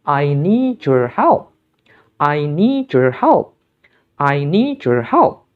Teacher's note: Dalam kalimat ini, kita menemukan bahwa kata need berakhiran bunyi de, sementara your berawalan bunyi ya. Sehingga kita perlu meleburnya menjadi bunyi je.